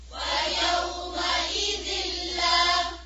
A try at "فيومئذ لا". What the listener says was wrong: حمزة کی زیر جو ہے اور باریک کریں.